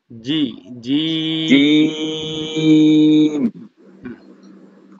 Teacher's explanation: জিহবার মধ্যখানে সরাসরি উপরের তালুর সাথে লাগবে লাগান [মিউজিক] জিম আবার বলেন জিম এইতো মাশাল্লাহ হয়ে গেছে